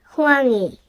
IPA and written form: hoɾɑŋi (호랑이)